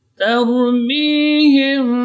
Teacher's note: Sini ta-nya tipis, ra-nya yang tebal. Jadi ta tidak boleh ikut tebal karena pengaruh ra.